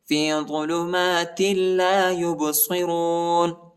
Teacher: تا کو لام کے ساتھ ملائیں گے. ٹھیک ہے. اس تا پر تنوین بھی آیا ہے